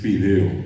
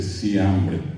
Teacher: En guaraní no existe la F. Entonces la criatura no puede decir fideo, sustituye por la S y dice sideo. No dice fiambre, dice siambre.